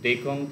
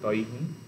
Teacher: ঘোষ অল্প প্রাণ ডি থেকে পরিণত হচ্ছে অঘোষ অল্প প্রাণ টি